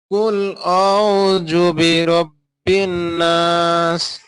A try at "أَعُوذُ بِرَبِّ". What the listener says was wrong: জুবি উচ্চারণ হয়ে যাচ্ছে ভাই, জুবি বলা যাবে না, বলতে হবে দুবি। দুবি দু দু।